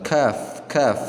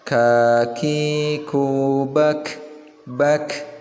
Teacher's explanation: Dan penekanannya juga ada hamas ya, agak sedikit lembut. Jadi ada anginnya yang keluar.